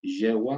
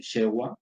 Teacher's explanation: el ensordecimiento del yeísmo, ¿verdad? Del yeísmo porteño, yewa, que se transforma en shewa, ¿sí?